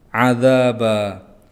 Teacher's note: dza panjang 2 harokat karena itu mat tabi'i karena ada alif yang diikuti oleh fathah. Ba itu ada fathah tanwin yang diwaqafkan maka ini mat iwad, cara bacanya di fathah lalu dipanjangkan 2 harokat.